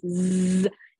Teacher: if you say Z you can feel your throat vibrating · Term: voiced sound